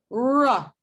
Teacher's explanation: Look at the retroflex, r. It's approaching the alveolar ridge, but it's not touching it. That means that r is also an approximant because we're not touching, it's not hissing quality, so it's an approximant.